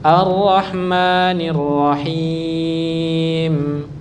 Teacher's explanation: Langsung sukun arrahmanirrahim langsung sukun tidak diayun.